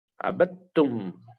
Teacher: هذا حرف مكتوب ولكنه لا ينطق لأن فيه إدغام. عبدتم نحن ننطق التاء مشددة ونحذف الدال